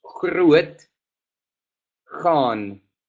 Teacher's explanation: El D se convierta en un T. Después, la G tiene un sonido gutural similar al J en castellano, pero más acentuado. Entonces decimos Gruet, Gaan.